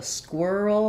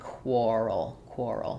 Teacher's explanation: for squirrel we had the were sound squirrel for quar this has the or sound